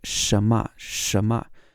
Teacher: you can't really hear the N in the middle